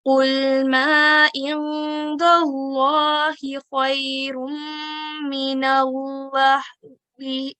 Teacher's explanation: we'll be doing nasal sound for 2 seconds whilst concealing it as well. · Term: idgham naqis